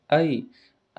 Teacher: ऐ हा शब्द आ आणि ई या दोघांपासून बनलेला आहे म्हणून त्याला म्हणतात संयुक्त स्वर